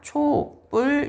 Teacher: 울림 소리로 끝나게 되는 경우 뒷말이 안 울림 또는 예사 소리로 시작되는 경우래요. 자, 그럴 경우에는 뒷말의 첫 소리가 된 소리로 발음이 된대요